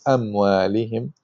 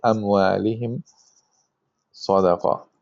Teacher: the reader should be careful to close its lips completely and not to say the meme with an ikhfa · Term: izhar